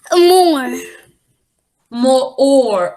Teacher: it's not making that o sound it's getting swallowed up by the R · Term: pirate sound